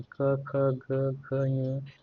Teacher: क वर्ग का उच्चारण स्थान कंठ, गला